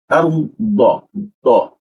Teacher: huruf D itu lidahnya itu bertemu dengan ee gigi kanan kiri ya